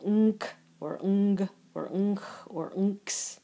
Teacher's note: And this is, we have no new letters for this, but you should know that when you have gamma in combination with any of the palatals, they're pronounced with an ng noise